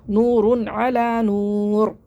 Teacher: دو پیش کی تنوین کے بعد حروف حلقی میں سے عین آ رہا ہے تو یہاں پہ ہم اظہار کریں گے ، نور، غنہ نہیں کرنا، نور غنہ نہیں کرنا ہے، نور